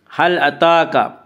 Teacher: هل أتاك، تا کے اوپر کھڑا زبر ہے، کھڑا زبر کو ایک الف کے برابر کھینچ کر پڑھیں گے۔